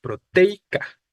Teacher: lo que sucede aquí entre la e y la i en la palabra proteica es un diptongo